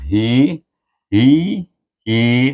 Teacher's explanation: Dan ha baris bawah, hi, dia pada perut lidah kita.